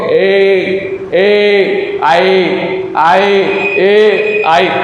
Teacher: अब ए दई तो में क्या है, एक तो हो गया ए, दूसरा द के ऊपर जो मात्रा लगी हुई आई की वो होगी ए और आई, ये दोनों, इन दोनों का उच्चारण स्थान जो है कंठ तालु में होता है